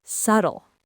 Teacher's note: that B is a ghost. It's completely silent. The correct pronunciation has only two syllables